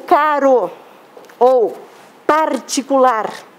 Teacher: eu digo caro ou particular e esse R é menor e mais fraco